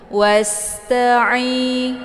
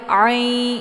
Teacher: Jadi ain ini letak posisinya yaitu tenggorokan bagian tengah. Jadi jangan dibaca i lewat hidung ya. Itu posisi yang salah. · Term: huruf ain